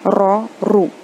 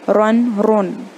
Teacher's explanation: तो हम शुरू करते हैं रॉ रूल्स से। रॉ अगर रॉ के ऊपर अगर फतहा या दम्मा हो, मतलब ज़बर या पेश हो, तो रॉ को मुंह भर के पढ़ा जाता है